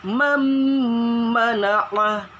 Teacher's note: Nun sukun ketemu huruf mim. Masukin ke mimnya.